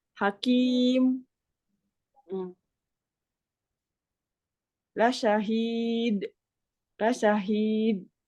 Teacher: cara wakafnya boleh dengan membaca harakat aslinya itu wakf room tapi bunyinya agak lirih juga